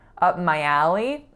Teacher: the up and the my being as close together as possible without a release on that P